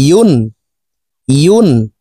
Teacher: ইয়ার উচ্চারণ জিব্বার মধ্যখান থেকে পড়ব। ইয়ার উচ্চারণ হামজার উচ্চারণ করা যাবে না।